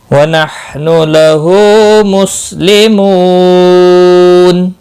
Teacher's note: ہا کا خاص خیال رکھنا ہے، وسط حلق والا ہے ہا، باقی کسی بھی حرکت کو کھینچنا، حرکت والے حرف کو کھینچنا نہیں، ہا کے اوپر الٹا پیش ہے، ایک الف کے برابر کھینچ کر پڑھیں گے۔